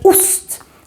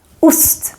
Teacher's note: here the O is very short because we have 2 consonants coming after it, the S and the T.